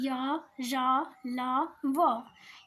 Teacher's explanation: इनका उच्चारण जीभ, तालु, दंत और ओष्ठ के परस्पर सटाने से होता है, परंतु कहीं भी पूर्ण रूप से स्पर्श नहीं होता, अतएव इन्हें अर्धस्वर भी कहा जाता है।